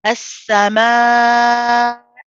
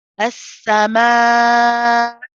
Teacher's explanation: So what you're trying to do here is say as-sama, keep it going, do your mud, prolong the mud. And when you want to say the Hamza, stop your voice and start again.